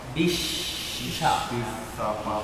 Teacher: Jadi suaranya menyebar dalam mulut. Tengah lidahnya naik ke atas.